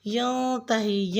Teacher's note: ینتہی میں نون ساکن ہے، یہاں پہ اخفا ہوگا، یعنی غنہ کی آواز کے ساتھ پڑھا جائے گا۔ ینتہی، ینتہی نہیں کریں گے۔